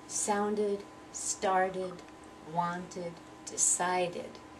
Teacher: I have to pronounce the ED ending as if it's a completely separate syllable. So sound becomes sounded, and I need to hear that rhythm.